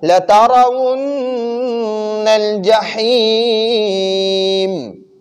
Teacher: ادھر را پر زبر ہے تو را کو پر پڑھیں گے. لترى اور نون مشدد ہے تو نون مشدد پر ہمیشہ غنہ ہوگا